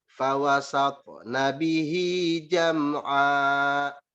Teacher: Di sini harus ditahan ya. Ini hukum bacanya gunnah, jadi dia harus ditahan 2 harokat.